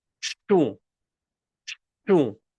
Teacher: Notice it's very, very nasal.